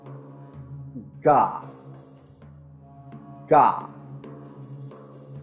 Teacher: a voiced velar plosive, and it is produced by obstructing airflow in the vocal tract with the back of the tongue at the soft palate while engaging the vocal cords